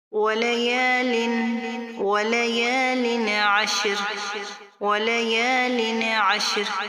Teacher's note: تنوین کے بعد حروف ہلکی میں سے عین آ رہی ہے، تو ہم یہاں پر غنہ نہیں کریں گے، یعنی اظہار کریں گے۔